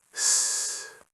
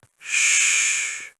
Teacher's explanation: S is sharp and narrow. Sh is softer and wider.